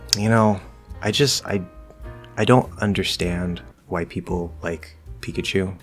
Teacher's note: i'm keeping an overall lower tone keeping a lower pitch i'm closer to the ground i'm closer to the gravity the gravity is making it heavy